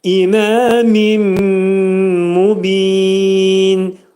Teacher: Nun səsi itirilir və mimə çevrilir. Mubində isə ayə sona yetdiyinə görə mubin burada mədd-i ariz olacaq. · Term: idğam mə'al-ğunnə